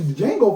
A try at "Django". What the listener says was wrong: my God, the D is silent. They say it in the movie.